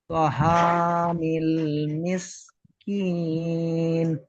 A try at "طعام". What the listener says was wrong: দেখেন এখানে তো হা বলছেন, হা হবে না, আইন এটা। তা, তাআমিল মিসকিন। তা, তাআমিল।